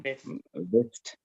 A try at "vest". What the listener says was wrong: ඒක vest V අකුරෙන් ඒක බටහිර ඒක බටහිර දිශාවට මොකද කියන්නේ